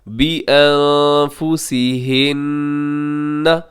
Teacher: اور اس سے پہلے جو آتا ہے نون ساکن، بِأَنفُسِ، نون ساکن کے بعد فا ہے، یہاں پہ اخفا کریں گے